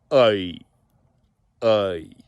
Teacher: it's a very open OI sound here